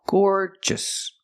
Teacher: So the first syllable is the long or sound, like floor and more.